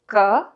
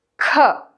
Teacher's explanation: alpa prana is just ka lightly maha prana is kha